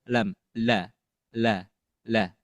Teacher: Ya, kita lihat huruf lam ini yaitu makhrajnya afwan makhrajnya ada di allisan atau ee lebih tepatnya yaitu thful lisan yaitu di ujung ujung lidah yang bertemu dengan pangkal gigi seri atas atau lebih ke gusi